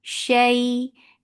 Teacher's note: This is lean when you're attaching fatha with ya. You're making it soft.